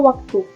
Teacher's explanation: bunyi semivokal bilabial atau dorsovelar bersuara